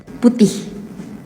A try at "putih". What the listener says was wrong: Indonesians, you have to kind of like pronounce the H at the end.